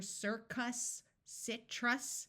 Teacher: in these two words it was not a clear circus Citrus the short u sound may have sounded muffled and more like a short I